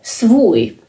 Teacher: V does not have any power when it's preceded by another voiceless consonant.